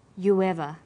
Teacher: you ever u ends with u a high back vowel so it links with linking type 2